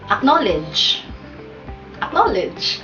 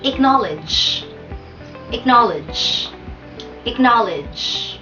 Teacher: Ang stress ay nasa second syllable.